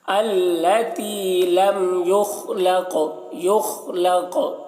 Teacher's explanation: دیکھیے خا کو پر پڑھ رہے ہیں اور قاف کو بھی پر پڑھ رہے ہیں، اور قاف میں قلقلہ بھی ہو رہا ہے